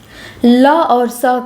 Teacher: ल और स का उच्चारण स्थान दंत्य है। दांत और जीभ के स्पर्श से बोले जाने वाले वर्ण को दंत्य वर्ण कहते हैं।